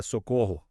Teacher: Tipo quando a gente grita socorro, bem alto. A sílaba cor fica super forte. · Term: sílaba tônica